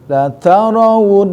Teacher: si nun yang bertasdid masuk kepada gunnah musyaddadah dan al khaisyum, rongga hidung, sehingga fungsi hidung itu ada kalau minimalnya 2 harokat.